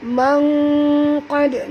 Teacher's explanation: nun mati bertemu qaf, sorok dan dengung, ikhfa hakiki. Mangqad, huruf qaf tebal, dal lembut ya.